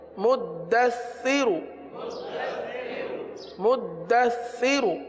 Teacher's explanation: تو زا پر رکیں گے، مزمل، مدثر. ہاں سا ہے، سا میں سیٹی کی آواز نہیں آتی، سا میں زبان کا سرا اوپر کے دانتوں کے اندرونی کنارے پر لگتا ہے